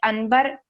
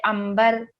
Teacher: اگر نون ساکن یا تنوین کے بعد حرف با آ جائے تو نون یا جو اس کے اوپر تنوین ہوتا ہے وہ اس کا ساؤنڈ چینج ہو جائے گا میم میں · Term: اقلاب